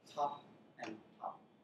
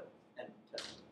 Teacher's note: the difference there is whether you aspirate the T, so the difference between t and t.